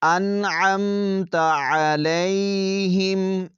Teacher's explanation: ظاہر کر کے پڑھیں گے، انعمت، غنہ نہیں کریں گے، انعمت، عین کی آواز کو بھی واضح کریں گے، حمزہ کی آواز نہ آئے